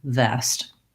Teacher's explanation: I should feel my upper teeth and lower lip, and that sound continues, vest.